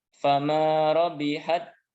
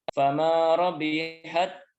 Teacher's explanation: huruf pertama dimasukkan ke dalam huruf kedua dibaca tanpa gunah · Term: idgham mutamatsilain